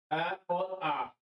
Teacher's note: है कंठेश स्वर कंठे स्वर यानी कंठ से उच्चारित होने वाले